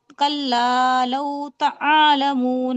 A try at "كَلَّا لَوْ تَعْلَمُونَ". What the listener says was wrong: آپ تعالمون کہہ رہیں گے، عین پر دیکھیے صرف جزم لگائے، زبر نہیں ہے. تعالمون کی جگہ کہیے تعلمون.